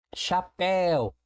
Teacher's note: Duas sílabas. E eu percebo que a última sílaba é a sílaba tônica.